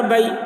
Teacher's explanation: یہ یا لین ہے تو اس کو نرم آواز کے ساتھ جلد پڑھیں گے